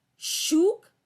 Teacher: यहां पर तालव्य श का उच्चारण हो रहा है